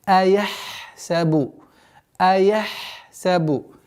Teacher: Ха, если идет впереди свистящего звука син, нужно максимально его стараться максимально до конца произносить.